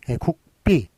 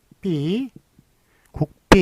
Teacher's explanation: 무성음과 무성음이 서로 이렇게 연속이 됐을 땐 뒤에 있는 게 된 소리가 난다라는 그런 된 소리 되기 현상입니다.